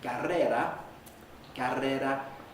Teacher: You need two or more vibrations for the first R and only one closure for the second.